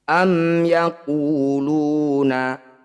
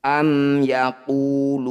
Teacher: sukun bertemu selain mim dan ba maka disebut bacaan izhar syafawi bunyi mim sukunnya baca dengan jelas rapatkan bibir tidak usah dengung